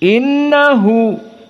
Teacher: Dan di sini semuanya dari 5 qurra, Hamzah, Khalaf al-Ashir, Yaqub, semuanya sama, tidak ada khilaf. Innahu, maka nun musyaddadah gunnah, maka makhrajnya dari hidung